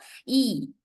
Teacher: Tense vowel, high front tense vowel means E sound. Long E sound